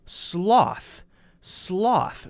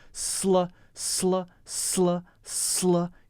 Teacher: you have to jump very quickly from the S to the L sound